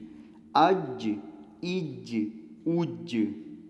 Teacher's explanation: جیم قلقلہ حروف میں شامل ہے، تو اس کو اپنی جگہ سے ہلا کر پڑھیں گے۔